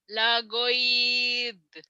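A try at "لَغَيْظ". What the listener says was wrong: lagoid, jangan ada e-nya. Lagoiz, bukan kol-kolah ya.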